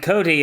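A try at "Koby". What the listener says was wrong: Kobe, by the way. it's Kobe. B, not D.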